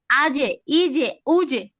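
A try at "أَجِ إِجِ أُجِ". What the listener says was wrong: মাশাআল্লাহ, এই তো চমৎকার একটা উচ্চারণ করছেন, এটা পারফেক্ট হয়েছে।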